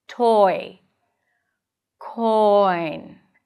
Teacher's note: Here we're shifting from the aw to the e. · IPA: /ɔɪ/